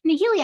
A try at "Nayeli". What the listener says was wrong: Yeah, Nayeli, the H is silent.